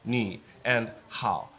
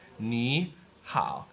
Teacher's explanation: the first third tone changes to a second tone